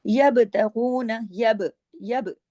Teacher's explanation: आवाज को उसकी मखरज पर हिला देते हैं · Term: कलकला